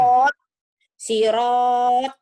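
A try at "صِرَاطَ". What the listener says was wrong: Bukan. Itu mah kalau dihentikan. Dibaca apa adanya dulu. Siroto. Ini rohnya mad tobi'i. Mad asli. Siroto.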